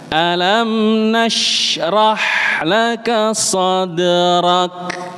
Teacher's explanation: Antara huruf dalnya terpisah tapi bukan berarti ada jedanya.